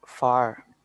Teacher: F-A-R, when it is F-A-R, okay, far, you have to pronounce the last R